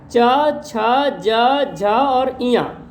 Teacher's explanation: च वर्ग में भी 5 होते हैं, च, छ, ज, झ और इया, ये भी 5 होते हैं और इनको तालु कहते हैं, तालु ध्वनि कहते हैं क्योंकि उनका उच्चारण तालु से होता है, तालव्य भी बोलते हैं।